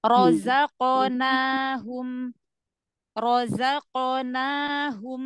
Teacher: karena dia pantulan ya jadi dia lebih cepat setengah harakat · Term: qqalah